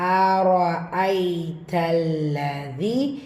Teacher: யா மத்தா மதுல் அஸ்லி 2 ஹரக்கத்தளவு நீட்டம் கொடுத்து ஓதணும்